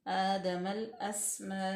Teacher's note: अलिफ और लाम जो है उसको हम साइलेंट करेंगे और लाम में डायरेक्ट मिला देंगे मीम को · आदमल अस्मा, हमज़ा जो है वो मफ्तू है, सीन जो है वो साकिन है और सीन पे सीटी की आवाज़ वाज़िया तौर पे आनी चाहिए क्योंकि यह रूफ़ सफ़ीरिया है। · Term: लाम तारीफ़